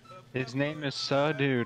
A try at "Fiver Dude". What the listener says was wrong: There's no Sir. There's five It's five dude. There's no S. Five dude.